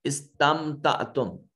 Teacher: میم ساکن کے بعد تا ہے، لہذا نہ با ہے نہ میم ہے تو یہ میم ظاہر کر کے پڑھا جائے گا، اس کو اظہار شفوی کہیں گے.